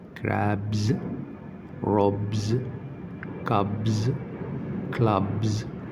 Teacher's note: يبقى انتهت الكلمة ب فينطق الاس الزيادة اللي بعديها ز